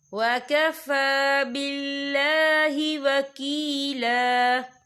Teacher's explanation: وَمَا فِي الْأَرْضِ وَكَفَى بِاللَّهِ وَكِيلًا، یہ دیکھیں ہوا کا فا کے اوپر کھڑی حرکات ہے تو ہم یہاں 2 یا 3 عدد کے برابر کھینچیں گے، اور آگے دیکھیں باللہ، یہاں اللہ کا نام باریک پڑھا جائے گا کیونکہ اللہ کے نام سے پہلے زیر ہے۔